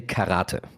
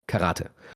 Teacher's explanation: in Germany we say karate, so we stress the second A